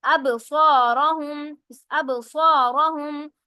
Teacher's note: با کے اوپر قلقلہ ہوگا کیونکہ با ساکن ہے · را موٹی پڑی جائے گی